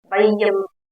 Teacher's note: ஐகாரம் சொல்லின் முதலில் வரும்போது ஒன்றரை மாத்திரையா ஆகும் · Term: ஐகாரக் குறுக்கம்